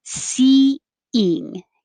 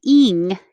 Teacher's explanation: then you can make it slide together a little smoother and it makes a y sound because you're going from the high position your tongue's very high for e and then it comes down for ying